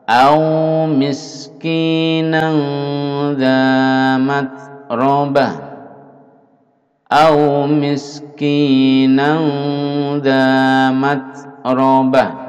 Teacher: ada bunyi hamas ya, ada angin yang mendesis keluar sedikit